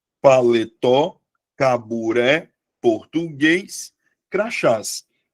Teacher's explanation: todas as palavras tenham como sílaba tônica a última sílaba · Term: oxítona